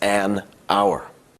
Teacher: hour starts with an H, it actually sounds like it starts with a vowel sound